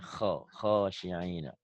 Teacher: Kho-nya kurang kotor ya